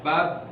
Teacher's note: Pada bab ketika kita berhenti dia namanya qalqalah kubra, kuat